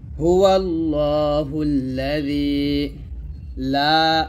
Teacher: লা তে আমরা তিন আলিফ পরিমাণ টান দিব